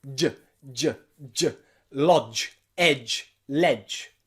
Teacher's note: Remember, tongue goes from d to ch. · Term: j sound